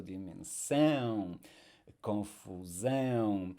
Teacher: We will stress the last syllable in Portuguese, so dimensão, confusão, and of course the nasality, our nasal diphthongs, dimensão. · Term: word stress